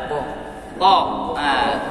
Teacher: Kalau ta dia sifatnya isti'la atau tebal.